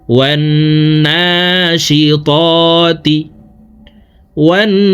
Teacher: দর্শক দেখুন, এখানে হরকতের বামে নুনের উপরে তাসদিদ আছে, এই কারণে জবরওয়ালা ওয়াওটি তাসদিদওয়ালা নুনের সাথে 3 সেকেন্ড পরিমাণ গুন্নাহ করে পড়ব